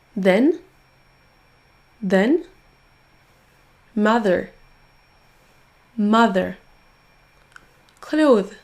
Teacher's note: Pensez bien à mettre votre langue au niveau de vos dents et à pousser ensuite en faisant un son z, mais vraiment avec votre langue placée au niveau de vos dents d'abord. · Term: son th